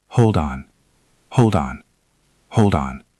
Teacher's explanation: Notice how there is no break in the sound. It is one continuous line. · Hold ends with a D. On starts with an O. When we link them, that D moves over. It becomes hold on.